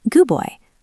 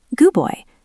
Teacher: The D is very weak. We almost don't say it.